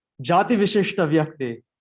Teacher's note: the two S's, like this first one is a palatal S, and the second one is a retroflex